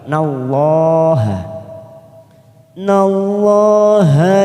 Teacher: lam jalalah karena didahului fathah maka kita baca tafkim atau tebal